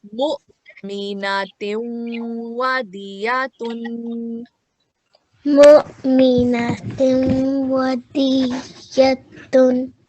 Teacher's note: Here at waw mushaddad, we're going to give 2 seconds